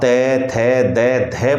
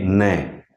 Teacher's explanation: आपकी जीभ दांतों को स्पर्श कर रही है लेकिन गौर कीजिए जब आप न का उच्चारण कर रहे होते हैं तो जीभ दांत नहीं बल्कि मसूड़े को स्पर्श करती है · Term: वर्त से